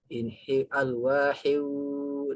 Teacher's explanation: Jadi ketika tanwin berhadapan dengan waw, maka waw itu hurufnya adalah dibacanya melebur ya, hiu, idgham bi gunnah. Dibacanya melebur ke huruf wawnya